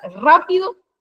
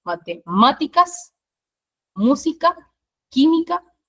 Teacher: las palabras esdrújulas que son aquellas que tienen la antepenúltima sílaba como tónica